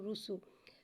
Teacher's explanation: سین کو ایک الف 3 مقدار کھینچ کے پڑھیں گے۔ سین میں سیٹی کو ظاہر کر کے پڑھیں گے